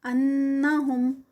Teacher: اعوذ باللہ من الشیطان الرجیم بسم اللہ الرحمن الرحیم وَلَوْ أَنَّهُمْ آمَنُوا وَاتَّقَوْا لَمَثُوبَةٌ، لو میں جو ہے وہ واو لین ہے، انہم ان جو ہے وہ نون مشدد ہے، غنہ ہوگا یہاں پر